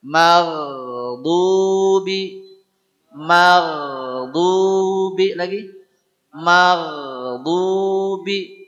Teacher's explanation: itulah huruf ko dan huruf gain keluar di tenggorokan